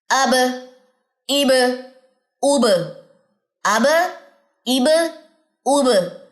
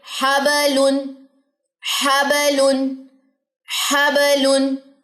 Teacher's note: سانس میری ہتھیلی کو نہیں لگ رہی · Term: جہر